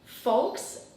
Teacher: There's no L sound, just folks.